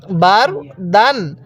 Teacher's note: এই র টা একটু মোটা করে পড়বো কারণ র সাকিনের পূর্বে যদি জবর থাকে তাহলে র টা মোটা করে পড়তে হয় বার দান এরকম ভাবে শিখবো এরপরে আমার সাথে পড়ুন জিম মিম